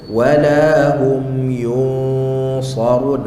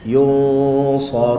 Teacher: nampak ketebalan yang ada pada dengung tu. Kerana apa? Kerana huruf sad selepas nun. Nun huruf berdengung.